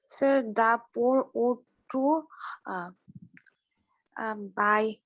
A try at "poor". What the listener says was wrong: দ্য পুয়ারের পরে বলো, আর উচ্চারণটা তো পোর না, পুয়ার।